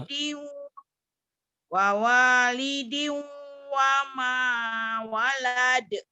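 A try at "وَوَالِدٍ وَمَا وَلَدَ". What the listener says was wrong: waladnya jangan panjang. Walada. Walada nggak ada yang manjangin.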